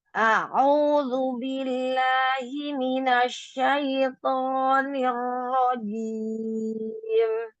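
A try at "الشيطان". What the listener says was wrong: Shinnya Ibu, shin itu suara tafashi, suara burung. Minasyaiton.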